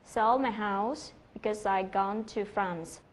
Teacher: Đó là sell, house, gone và France được đánh trọng âm. Có nghĩa là khi nói thì chúng ta phải nhấn mạnh vào những cái từ này.